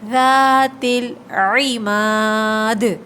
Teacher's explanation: ارم ذات العماد، ارم ذات ذال کو نرمی سے ادا کریے، ذات العماد، دال پہ آخر میں قلقلہ ہوگا، ٹھیک ہے، آواز پلٹ کر آئے گی